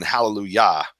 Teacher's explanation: remember that yah and hallelujah that the emphasis is on the yah